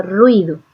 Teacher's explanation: La U es la vocal cerrada átona, mientras que la I es la vocal cerrada tónica.